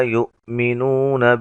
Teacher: حمزہ کو جھٹکے سے ادا کریں گے